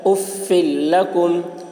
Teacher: اس لیے فا کو لام سے ملا کر بغیر غنہ کے پڑھیں گے۔ اس کو ادغام بلا غنہ اور ادغام تام بھی کہا جاتا ہے۔